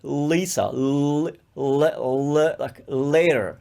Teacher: especially in north american l often comes from much lower